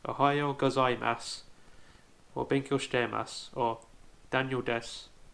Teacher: the su on the end of these words will sound more like an S instead